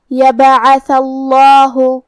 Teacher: کیونکہ عین پہ زبر ہے اور تھا پہ بھی، تو ہم یہ دونوں زبر کو برابر سے ادا کریں گے، اور حرف تھا کو زبان کے سر اور اوپر والے دانتوں کے اندرونی کناروں سے ادا کریں گے · لفظ الجلالہ مطلب کلمت اللہ کے لام کو ہمیں تفخیم سے مطلب موٹی آواز میں پڑھنا ہے، کیونکہ اس کے پہلے والے حرف پہ تھا پہ زبر ہے.